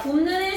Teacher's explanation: 굽의 비읍이 미음으로 바뀌어서 미음으로 발음이 된대. 자, 그래서 기억 디귿 비읍이 니은 미음의 영향을 받아. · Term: 비음화